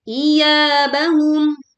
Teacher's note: yanya dibaca panjang dua harakat